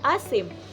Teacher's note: Halimbawa sa impit na tunog ay ang maasim, may biglang paghinto.